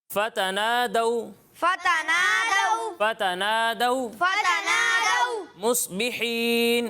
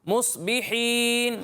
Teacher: صاد کو پر پڑھنا ہے کیونکہ صاد حروف مستعلیہ میں سے